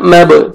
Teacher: आपने जाल को नरमी से अदा करेंगे, अलिफ मद्दा है, जाल को आपने 1 सेकंड खींचना है 1 अलिफ के बराबर। बा हुरूफ क़लक़ला में से डबल साउंड आएगा